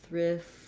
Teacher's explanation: When we change to thrifty, our T turns into more of a D, and then it's going to sound more like thrifty.